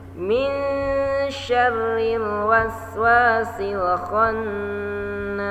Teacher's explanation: Jangan sampai lupa ro-nya tipis karena ro harokat kasroh.